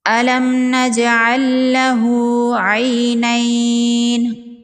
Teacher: الم نجعل لہ عینین، میم ساکن کے بعد نون ہے، یہاں پر میم کا اظہار ہوگا، اظہار شفوی ہوگا، میم کو ظاہر کر کے پڑھیں گے، میم پر غنہ نہیں کریں گے۔ جیم حروف قلقلہ میں سے ہے، جیم ساکن پر قلقلہ ہوگا۔ لام ساکن کے بعد لام مشدد ہے، یہاں پر ادغام ہوگا، ادغام مثلین، لام ساکن کو لام مشدد میں ملا دیں گے۔